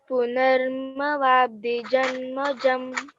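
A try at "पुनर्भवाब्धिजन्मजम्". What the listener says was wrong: Didi, this is bha. B-H-A. Bha. Like how you are saying here Bhavabdhi. Same way here also.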